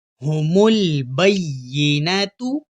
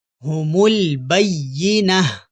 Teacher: اب یہاں اس لفظ کے اوپر غور کیجئے، وقف کرنے سے پہلے ہم اس کو تا پڑھیں گے، لیکن جب ہم وقف کریں گے تو ہم اس کو ہاں میں بدل دیں گے